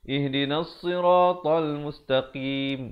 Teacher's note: Ingat ya, di sini qaf baris bawah. Ramai orang sebut makhraj huruf qaf ni kurang tepat. Dia dengar bunyi macam huruf kaf.